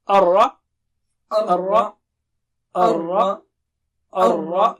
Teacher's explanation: Ra should be thick and it should not be like English Ra. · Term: thick Ra